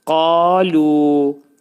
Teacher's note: Demək, qa da, lu da ikisi də iki səs qədər qaldırılacaq.